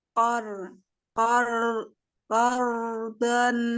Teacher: Dha qardan Qor hasan tebal ro karena diawali fathah.